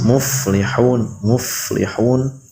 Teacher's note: perut bibir yang bawah itu dirapatkan dengan gigi seri yang atas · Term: huruf fa